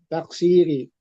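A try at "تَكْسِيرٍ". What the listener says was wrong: Taksirin. Tanwin kan.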